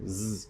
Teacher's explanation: you are simply making an S sound but your vocal folds are vibrating at the same time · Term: zed sound